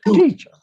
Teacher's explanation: The second syllable is swallowed. And so you don't hear it at all. So it's almost teacher.